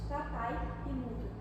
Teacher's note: Então, vemos que temos duas vogais juntas na mesma palavra. Então, o I ele vai acabar perdendo um pouco do som dele, vai ficar um som mais fraco. Então, vai acabar se formando uma semivogal light.